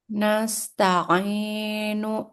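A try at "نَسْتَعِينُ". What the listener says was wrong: Nah, cukup 2 harokat aja matnya, jangan terlalu panjang. Jadi dia ini 2 harokat saja, oke? 2 harokat.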